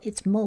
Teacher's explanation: it's mo with the long O sound because this is an open syllable. An open syllable has one vowel and the vowel is at the end.